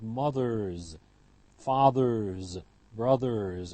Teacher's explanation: The retroflex in English is voiced, and so it's followed by a voiced ending